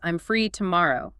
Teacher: Your voice goes down at the end. It signals authority. It signals I know what I'm saying. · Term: falling intonation